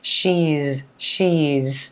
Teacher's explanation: Again, notice how she is becomes she's, she's. And again, we've got that voiced z sound because of the E vowel, voiced.